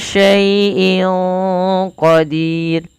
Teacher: Q termasuk salah satu huruf yang dia pangkal lidahnya terangkat teman-teman jadi dia menebal